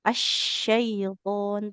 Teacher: Tengah lidahnya menekan ke langit-langit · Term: Huruf shin